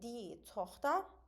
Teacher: C-h birləşməsindən əvvəl qalın sait var. Buna görə də c-h x kimi tələffüz olunur. Söz sonunda da var, onu da a-ya çeviririk.